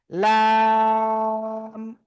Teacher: জিব্বার আগার কিনারা উপরে মাড়ির দাঁতের গোড়ার সাথে লাগাতে হবে। কি বললাম? এই যে আগার কিনারা উপরে, এই পাশে মাড়ি, এই পাশ বা এই পাশ, উপরে মাড়ির দাঁতের গোড়ার সাথে লাগিয়ে জাস্ট চার আলিফ টানে উচ্চারণ করতে হবে, লাম।